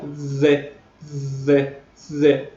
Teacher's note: la D de la D que pronunciamos bajando un poco la lengua y de forma más fricativa